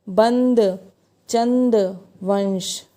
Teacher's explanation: अनुस्वारी के उच्चारण में नाक से सांस बहुत कम निकलती है और मुंह से सांस अधिक निकलता है